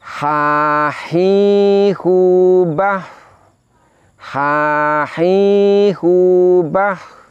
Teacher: Kedua huruf ini makhrajnya sama, yaitu berada di tenggorokan bagian tengah. Huruf ha ini dari segi nafas kita ucapkan dengan nafas lepas. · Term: sifat hamas